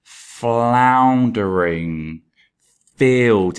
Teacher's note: we've got that fricative alliteration with the f sound floundering field it just sounds really unpleasant and we've got the